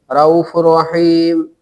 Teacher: تنوین کے نون کو را سے بدل کر ادغام کریں گے